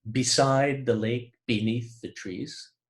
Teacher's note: That's a repetition of that bilabial voiced plosive, B.